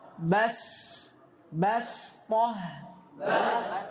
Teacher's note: jangan sampai seorang pembaca menebalkannya karena ba ini huruf tipis